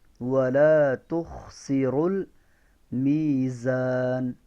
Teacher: را ساکن, اس سے پہلے زبر ہے نا, تو را کو موٹا پڑھیں گے